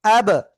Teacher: ওয়ালা, হামজা বা জবর আব, আব কলকলা, কফ তো বা জিম দাল, এই 5 অক্ষরে একটা অক্ষর আসছে, আমরা সাকিন দিয়ে পড়বো। সাকিন না, সাকিন রয়েছে এই জন্য আমরা কলকলা করে পড়বো।